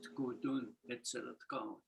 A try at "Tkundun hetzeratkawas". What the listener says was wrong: Yeah, but you say K.